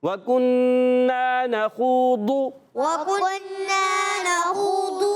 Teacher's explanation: واو پر زبر ہے، حرکت ہے، واو کے دائی ہونٹوں کی گولائی سے حرکت ہے، نہیں کھینچنا. کاف پر پیش ہے، ہونٹ گول ہو جائیں گے. نون مشدد، ایک الف کا غنہ کرنا ہے. نون الف زبر نا، الف مدہ بھی کھینچنا ہے.